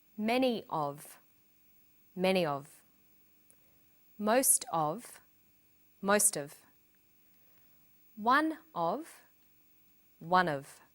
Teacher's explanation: Notice that of in these phrases is unstressed.